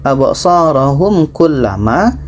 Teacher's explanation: mim mati bertemu ka tidak dengung